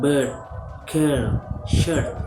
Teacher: pronounced in the central part of the vocal tract with the lips and their middle position is a long vowel.